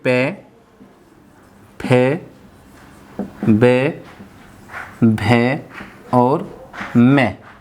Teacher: तो हमारे होठ आपस में टच होते हैं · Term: ओष्ठ